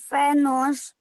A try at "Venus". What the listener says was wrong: Dangerous, but you don't say fan news. How do you say it? Venus. Venus.